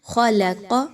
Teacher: خلق ایسا پڑھنا درست نہیں ہے بلکہ خلق، لام باریک، خا اور قاف موٹی